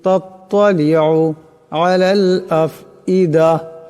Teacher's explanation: তাত্তালিউ, এখানে তো আছে, আওয়াজটা মোটা করিয়া পড়তে হবে